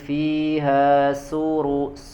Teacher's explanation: ujung lidah ya menempel ke gusi gigi seri bagian bawah ya maka seperti dia huruf shod ya huruf safir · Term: huruf Sin